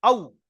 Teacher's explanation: এখানে কোনো টান নেই, কিছু নেই, নরম আওয়াজে পড়তে হবে, কোনো টান দেওয়া যাবে না। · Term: ওয়াউলিন